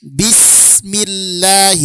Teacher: Sedangkan lam di lafaz Allah adalah tawas. Jadi mengalirnya sin itu lebih panjang dibandingkan mengalirnya lam. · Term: rakhawah